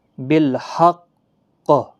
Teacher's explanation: بالحق جب وقف کریں گے تو سختی کے ساتھ وقف کریں گے، مستعلیہ کا حرف بھی ہے اور اس پر قلقلہ بھی ہوگا